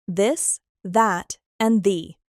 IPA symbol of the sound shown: ð